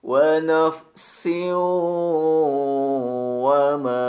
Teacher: Bila sesudahnya terdapat huruf wawu, maka harus dibunyikan dengan bunyi dengung yang ditahan 2-3 harokat